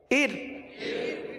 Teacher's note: اور حمزہ را زیر ار، اس را کو، ار والی را کو باریک پڑھیں گے، کیونکہ را ساکن سے پہلے زیر ہے